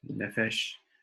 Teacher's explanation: either way they're accented on that first syllable